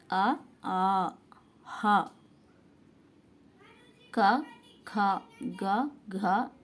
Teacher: కంఠం నుండి పుట్టి పలకబడే వర్ణాలని కంట్యాలు అని అంటారు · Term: కంఠ్యాలు